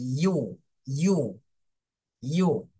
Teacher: এটার উচ্চারণ প্রথমে ঠোঁটটা ছড়ানো থাকবে, এরপরে গোল হয়ে যাবে